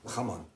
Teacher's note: le J, qu'on appelle la J, qui se prononce au niveau de la gorge